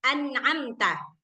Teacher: Suara nun sukun ketika diucapkan. Kalau izhar suara nun sukunnya itu tetap jelas.